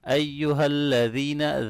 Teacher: ذال نرمی سے پڑھیں گے، یا مدہ ہے اس کو لمبا کریں